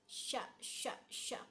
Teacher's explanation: bertemunya tengah lidah ke langit-langit atas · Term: huruf sya